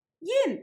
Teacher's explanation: here pronounced in the fourth tone rather than the usual third tone